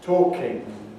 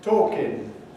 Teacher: The standard, educated, quote, correct form is with a velar nasal, talking. The popular, the low form, is with an alveolar nasal, talking. So the difference is talking, standard, talking, non-standard.